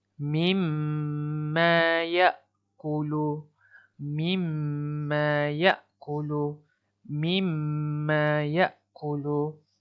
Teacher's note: perlu kamu baca dengung dengan kadar dua harakat di huruf mim yang bertanda syaddah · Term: mim syaddah